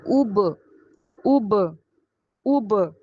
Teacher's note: یو کا sound آنا چاہیے، اس لیے او کر کے نہیں پڑھیں گے، مجہول نہیں کریں گے، معروف کریں گے